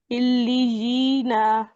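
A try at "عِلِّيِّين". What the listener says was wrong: پچھلا ورڈ دیکھیے جس میں آپ نے علیین پڑھا. اب یہاں پہ دیکھیے دو تشدید ہے، یا مدہ بھی ہے، اور نون پر آخر میں ایک حرکت ہے، الف نہیں ہے. اسے پڑھیں گے علیین.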